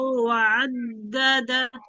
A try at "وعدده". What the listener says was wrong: ওয়াদ দাদা, দালে কি আছে? তাসদিদ আছে না দুইবার? ওয়াদ দাদা। তাই কিন্তু এই দালের সঙ্গে মিলিয়ে পড়ছি, ওয়াদ দাদা।